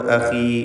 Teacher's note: ഖാഇന് കുറഞ്ഞ തഫ്ഖീം മതി, കസ്റ ആയതുകൊണ്ട്